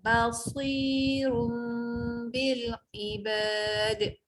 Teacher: Ba jangan baca bo, dia bukan bo. Ba tu nipis, sok je tebal.